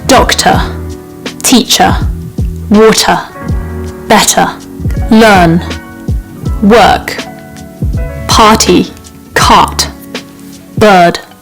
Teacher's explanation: dropping off the R sounds where there's no vowel sound after the R is really important to developing that RP sounding accent